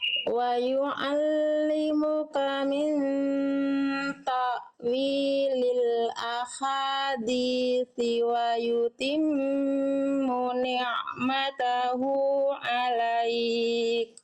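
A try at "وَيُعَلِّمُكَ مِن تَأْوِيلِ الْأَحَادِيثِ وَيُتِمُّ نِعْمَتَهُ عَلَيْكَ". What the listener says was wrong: Oke, bagus.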